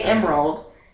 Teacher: Emerald is 3 syllables, but when I say it sounds like 2 syllables. Yeah, I say like I say Emerald, but when I think about it or when I write it down, it's 3 syllables.